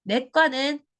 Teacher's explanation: 내과는 발음이 무조건 된 소리로 발음이 나요. 된 소리로 발음 나지만 요렇게 표시를 하지 않는다는 겁니다.